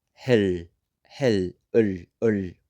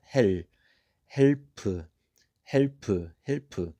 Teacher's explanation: You can hear my tongue going all the way kind of up and backwards into my throat. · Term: 릴 받침